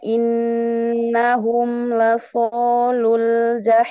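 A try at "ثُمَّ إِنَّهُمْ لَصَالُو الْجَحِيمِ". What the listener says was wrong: hurufnya tebalkan lagi in huruf shnya angkat istilanya pangkal lidah belakangnya diangkat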